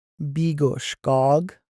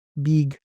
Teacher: So in western style they don't de-stress any of their vowel sounds. So they're going to pronounce their verb as bigosk. Whereas eastern style we destress that o sound and pronounce it bigk and c form is applied like so.